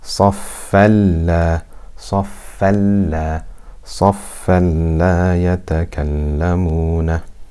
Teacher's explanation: So that means we must do idgham, we must merge the tanween into the lam without ghunna. · It attracts the tanween, and the tanween is merged completely into the lam